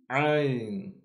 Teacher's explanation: we make the sound very sharp and it comes from the inner part of the throat